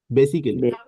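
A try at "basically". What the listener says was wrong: হ্যাঁ, এখন বেসিক্যালি সাধারণত মানুষ বলে, হ্যাঁ। আচ্ছা, আসলে মূলত এটার উচ্চারণ হচ্ছে বেসিকলি, রাইট, বেসিকলি। কারণ হচ্ছে আমি এটা বলি আর কি, যে দুনিয়ার সব কেলি এখন ক্লি হয়ে গেছে। ক্লি হয়ে গেছে, হ্যাঁ।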